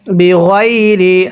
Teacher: ওয়াক তুলু নান নাবি ই, নুন জবর না, ওয়াক তুলু নান নাবি ই না, বাজের বি, গয়নিয়া জবর গই, বি গই, রজের রি, বি গয়রি, অনেকে এটাকে বি গাইরি পড়ি, গয়নিয়া জবর গাই পড়লে পড়াটা সহি শুদ্ধ হবে না